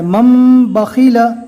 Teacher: میم کے اوپر جزم دے کر پڑھنا ہے اور نون کو چھوڑ دینا ہے۔ مم بخیل، یہاں پر بھی نون کو چھوڑ دیا جائے گا۔